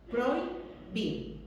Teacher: la fuerza de voz está en la segunda I, no en la I de prohíbo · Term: diptongo